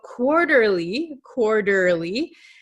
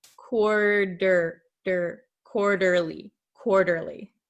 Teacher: So quarterly, quarterly, this T is going to become a flap T. So it sounds like an English soft D sound. In your country, it might sound like an R, but in English, it sounds like a soft D.